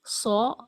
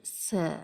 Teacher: فرق صرف صفت استعلاء یا مستعلیہ کا ہے کہ صاد حروف مستعلیہ میں ہے اور سین حروف مستعلیہ کے حروف میں موجود نہیں ہے۔ مطلب یہ کہ صاد کو موٹا پڑھیں اور سین کو باریک، اور لپ شیپ سے آپ اندازہ لگا سکتی ہیں، صا اور س۔